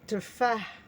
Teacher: Le H à la fin, c'est un H expiré dans la gorge. تفاح, d'une façon aiguë.